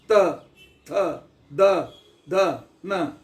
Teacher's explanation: ನಾಲಿಗೆ ಹಲ್ಲು ಹತ್ತಬೇಕು ಅಲ್ಲಿಂದ ಶಬ್ದ ಗಾಳಿ ಘರ್ಷಿತವಾಗಿ ಹೊರಗೆ ಬರಬೇಕು